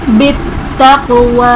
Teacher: قاف حرف قلقلہ ساکن ہے ہمارے پاس، تو یہاں پر ہم نے قلقلہ کو ظاہر کرنا ہے۔